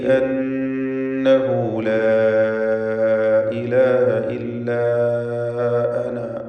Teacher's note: അന്നഹു എന്നതിലെ ദ്വമീറിന് മദ്ദുസിലത്ത് സുഗ്റ എന്ന 2 ഹറക്കത്തിൻ്റെ അളവിൽ മാത്രമുള്ള ദീർഘവും നൽകുക.